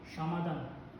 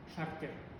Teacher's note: Любое Ч иностранное, когда входит в казахский, сразу превращается в Ш.